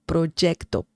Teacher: Some people pronounce the letter Y similar to the J sound in English.